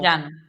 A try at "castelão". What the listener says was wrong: Não, castelão. Castelão. L. Não é lhe, é L. Castelão.